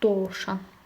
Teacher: dovşanın tələffüzü olurdu doşan. Hətta burda o da uzanırdı. Söhbət olurdu.